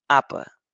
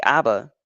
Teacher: the vocal cords must be turned on and off twice to produce apa and only once for aba. It is in this sense that aba is easier to say than apa.